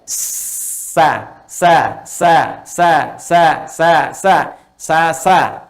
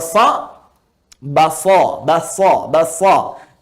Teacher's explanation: Kalau yang tadi mendekat, mau nempel, ini ke bawah. Jadi ketika dia bunyinya ke bawah, tidak muncul seperti O lagi. Tapi netral, jadi A.